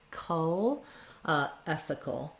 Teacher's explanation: Basically, it's a dark L, so you want to lift the front of the tongue, but leave the back of the tongue down. You have a little bit of an sound, like a schwa before your L.